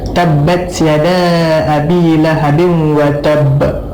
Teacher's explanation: Okey, kita tengok al-watab ba, pada huruf ba dia ada tanda syaddah dan kita kena pegang lama sikit watab qalqalah dia. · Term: Qalqalah Akbar